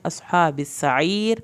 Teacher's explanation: صاد کو پر کرنا ہے، ہا کی کھڑی زبر کو کھینچنا ہے